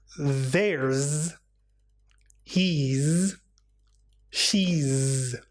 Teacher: the contraction there's he's and she's are pronounced with a Z sound because the S comes after the vowel sound